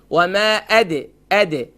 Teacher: اب یہاں ہم دال کو ہم لائٹ کرنا ہے، ہم یہاں اس کے اوپر پڑھتے وَمَا أَدْرَاكَ، ادو نہیں ہے، وَمَا أَدْ دال پر قلقلہ ہوگا، را کو ایک الف کی مقدار کھینچیں گے، کیف کو شارٹ ساؤنڈ کریں گے. وَمَا أَدْرَاكَ دال لائٹ، را فل موت.